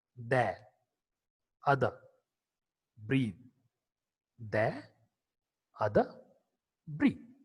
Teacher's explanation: The is a voiced dental fricative consonant.